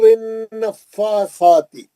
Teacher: نون پہ غنہ کریں گے، فا پہ کھڑا زبر پڑھیں گے 2 حرکت، سا پہ کھڑا زبر پڑھیں گے 2 حرکت.